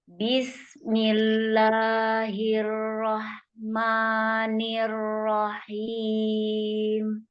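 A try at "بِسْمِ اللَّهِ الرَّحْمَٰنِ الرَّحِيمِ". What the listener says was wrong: Ayo konsep fathah buka mulutnya. Jangan tapi buka.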